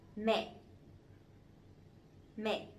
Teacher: the dấu nặng, the strong tone, so it has to be down and it has to be stronger a little bit